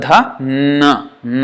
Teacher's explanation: da no no is nasal sound the sound is entirely coming from the nose